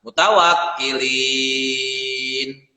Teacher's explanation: ketika di akhir ayat linnya itu harus dibaca panjang sebanyak 6 harakat.